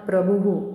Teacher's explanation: आता प्रभू भूच्या पुढे विसर्ग आहे त्याच्यामुळे हु असा उच्चारण होईल त्याचा